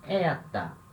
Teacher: a palavra começa com vogal e a primeira sílaba é a sílaba tônica